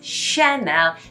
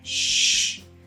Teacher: when you see a ch in french make more of that sh sound a little bit smoother a little bit softer